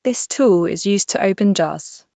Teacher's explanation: There you can hear a zed sound and a clear d